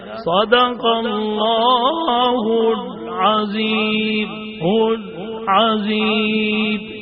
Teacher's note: جب لام ساکن ہے تو ظاہر ہے اس پہ آواز بند ہوگی، اس پہ دیر لگائیں گے تو غلط ہو جائے گا.